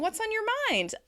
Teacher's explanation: I'm using that happy rise and then fall at the end in order to ask the person